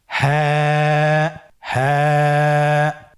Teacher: হ্যাঁ হরফটি উচ্চারণের স্থান কণ্ঠনালীর শুরু হতে